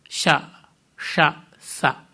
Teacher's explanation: ಆಮೇಲೆ ಈಗ ಊಷ್ಮವರ್ಣಗಳು ಅಂತ ಶ, ಶ, ಸ ಒಂಥರ ಹಿಸ್ಸಿಂಗ್ ನಾಯ್ಸ್ ಬರುತ್ತೆ, ಬುಸುಗುಟ್ಟದಂತೆ. ಬಾಯನ್ನು ಒಂದು ಬಗೆಯಲ್ಲಿ ಮಾಡಿ ಒಳಗಿಂದ ಗಾಳಿ ಜೋರಾಗಿ ತಳ್ತೀವಿ.